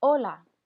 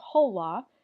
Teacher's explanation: you do not pronounce that letter H so you do not say whole law and just say Ola